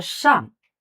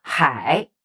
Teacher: Right tone is Shang, a fourth tone, Hai, third tone.